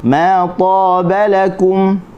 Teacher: huruf ta, terangkat hujung lidah, terangkat pangkal lidah, huruf yang tebal. Dan apabila dia berbaris atas selepasnya ada alif ni, keadaan ta yang paling tebal.